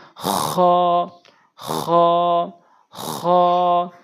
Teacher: হলকের শেষ থেকে উচ্চারণ করবো আমরা